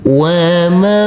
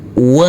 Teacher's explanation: sini ada huruf nun sukun yang bertemu dengan huruf Jim maka untuk huruf nun sukunnya kita baca dengan samar-samar dan kita dengungkan pada waktu berdengung persiapan masuk ke huruf Jim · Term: Ikhfa